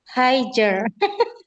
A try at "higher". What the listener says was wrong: Oh ya, no higer. G-nya hilangin, Bu. G-nya hilangin. Bacanya higher gitu.